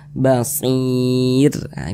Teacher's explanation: huruf r-nya dibaca tarqik Dibaca tipis sehingganya Tangkal lisan kita itu tidak naik terangkat ke atas hurufnya itu kita tipiskan basirah ditipiskan begitu bagi Bapak dan Ibu